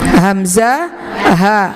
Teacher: aqsal halqi, artinya pangkal tenggorokan